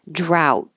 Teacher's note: D olives it's a VZ combination at the end olives drought hold that final T and the vowel is ow